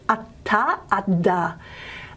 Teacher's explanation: And so if you say t, d, you should feel that your tongue tip is hitting that alveolar ridge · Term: alveolar stops